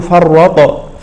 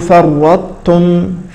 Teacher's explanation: هذه الطاء أدغمت في التاء بعدها فلا تقلقل، فلا نقول فرطتم، لا، نقول فرطتم.